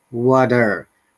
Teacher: the americans pronounce the r as r and t as a flap t and flap t sounds like d